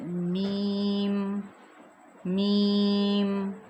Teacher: तरी वाले हिस्से से, यानी जहाँ पे हम लिपस्टिक लगाते हैं, लिपस्टिक के थोड़ा सा अंदर एक तरी वाला हिस्सा होता है, वहाँ से मीम अदा होता है।